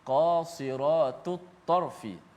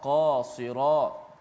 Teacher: Kemudian sad yang berbaris di bawah mengekalkan ketebalannya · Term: huruf yang tebal